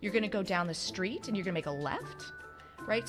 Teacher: Basically, this is ending a statement as if it were a question. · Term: uptalk